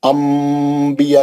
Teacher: अंबिया के वर्ड में नून रहता है लेकिन हम मीम पढ़ते इसको अंबिया, क्योंकि नून के बाद बा है, नून साकिन के बाद बा है, मीम का गुन्ने से पढ़ेंगे उसको अंबिया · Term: इखलाब